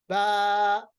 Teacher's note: आप देखिए, बा, यानी हमने खाली हिस्से से पढ़ा, हमारे गले से लेके हमारे मुंह तक। जब हमने बा पढ़ा, अलिफ को अदा किया, तो हमने इसको खाली हिस्से से अदा किया, किसी हिस्से को हमने आपस में नहीं मिलाया। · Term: अलिफ मद्दा